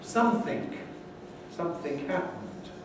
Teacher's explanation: In London, instead of something, you often hear a k at the end giving something.